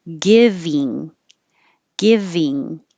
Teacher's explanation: Keep your tongue a little lower. Give, and then ing, your tongue goes higher in the back and it makes the whole tongue rise.